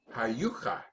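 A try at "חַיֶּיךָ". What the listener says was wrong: Oh, that's not an U. What's that vowel? The three dots.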